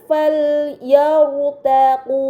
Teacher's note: Kemudian pada kata fal yartaqu terdapat huruf ra sukun yang sebelumnya harokat fathah berada di huruf ya, maka ra sukun tersebut harus dibaca secara tebal